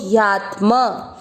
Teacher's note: आगे आधा त यात और म में आप मिक्स किया यात्म। ह का उच्चारण छोड़ना नहीं है लेकिन उसमें मिक्स नहीं करना क्योंकि आधा है